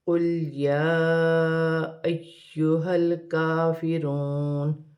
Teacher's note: لام ساکن ہے، لام کو قاف کے ساتھ ملا کر پڑھا جائے گا، اور یا پر کھڑی زبر بھی ہے، چھوٹی مد بھی ہے، مد منفصل۔ اسے 3 الف کی مقدار تک کھینچ کر پڑھا جائے گا۔ حمزہ کو یا کے ساتھ ملا کر پڑھا جائے گا، یا مشدد ہے، اور یہاں ہا کو لام کے ساتھ ملا کر پڑھا جائے گا۔ · حمزہ کو یا کے ساتھ ملا کر پڑھا جائے گا، یا مشدد ہے، اور یہاں ہا کو لام کے ساتھ ملا کر پڑھا جائے گا۔ کاف باریک ہے، کاف پر کھڑی زبر ہے، 1 الف کی مقدار کھینچ کر پڑھا جائے گا۔ واو ساکن سے پہلے پیش ہے تو واو مدہ بنے گی، اور واو کی صورت میں زبر گر جائے گی اور نون ساکن ہو جائے گی۔